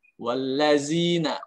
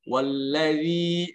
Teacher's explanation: huruf zal dalam pelafalannya lidahnya keluar sedikit ya